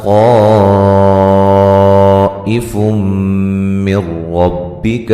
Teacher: یہاں نون تنوین کا ادغام مع الغنہ ہے